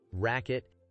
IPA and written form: ˈrækɪt (racket)